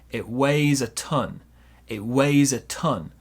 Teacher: Small stress on weigh, big stress on ton.